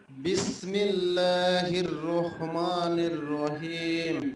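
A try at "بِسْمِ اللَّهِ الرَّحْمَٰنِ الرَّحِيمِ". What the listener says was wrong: একটু ঠিক করতে হবে প্রিয় ভাই, রহমানির রহিম, মোটা করে হবে, রো বলা যাবে না, র রহ।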